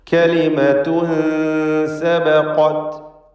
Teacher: കലിമത്തുൻ എന്നതിലെ തൻവീനിന് ഇഖ്ഫാ ഹഖീഖി നൽകി മറച്ച് മണിക്കണം. അവ്യക്തമാക്കി മണിച്ചുകൊണ്ട് ഉച്ചരിക്കണം.